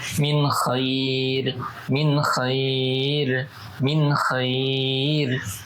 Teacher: nun mati bertemu dengan K maka dibaca izhar dibaca jelas tanpa adanya gunah